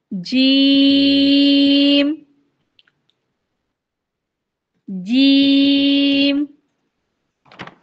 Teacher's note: अगर जब हम जीम अदा करते हैं ना तो जीम अदा करने से पहले जब हम स्टार्ट करने वाले होते हैं तो जबान का जो बीच वाला हिस्सा है ना ऊपर के तालू के साथ लग जाता है